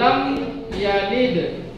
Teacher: Lam yalid ada qalqalah sugra karena di tengah bacaan, yaitu huruf da berharakat sukun.